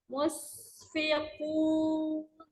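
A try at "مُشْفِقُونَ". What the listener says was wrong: Kena di huruf ini. Mush, pakai shin, ayo.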